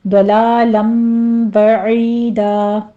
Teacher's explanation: ضاد کو پر پڑھتے ہوئے آگے آپ نے لام کو موٹا نہیں کرنا، باریک ہی رکھنا ہے، آگے تنوین کا قاعدہ اقلاب ہو رہا ہے، 2 کاؤنٹ کر لیں گے۔